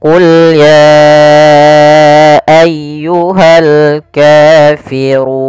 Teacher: Kemudian pada lafal ayyuhal kafirun ditekan ya-nya.